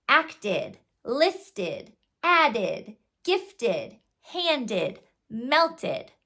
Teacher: it can sound like ID which has a schw sound before the D